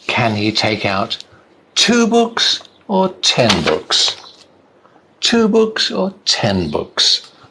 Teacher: voice goes up and then down on the last one